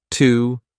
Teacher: you can say T, a very unstressed T, but connect it to your next sound.